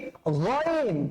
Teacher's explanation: গয়িনটা কিন্তু বেসিক্যালি কণ্ঠনালী থেকে উচ্চারণ করতে হয়